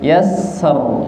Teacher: karena ro sukun, sebelumnya fathah, maka ro-nya tebal